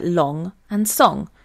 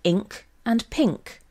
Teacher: it is a velar nasal meaning that the back of the tongue rests against the vellum